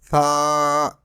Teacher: Some people pronounce it like Sa with whistle, which is wrong. This letter will be pronounced without whistle. It is pronounced from the tip of the tongue touching the inner edges of the top two front teeth.